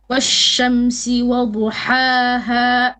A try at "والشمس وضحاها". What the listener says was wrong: Better.